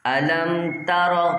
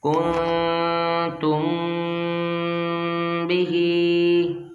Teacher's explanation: میم ساکن کے بعد حرف با، یہاں پر اخفاء شفوی اس لیے یہاں پر غنہ ہوگا